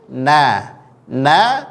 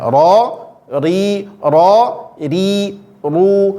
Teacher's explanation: ro dia lebih tebal punggung lidahnya menempel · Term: huruf ro